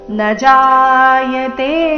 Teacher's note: ನ ಜಾಯತೆ ಇಲ್ಲಿ ನ ದೀರ್ಘ ಮಾಡಬಾರದು